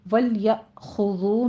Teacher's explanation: خا کو پر پڑھتے ہوئے اوپر ضمہ ہے، ہونٹ گول کر لیجئے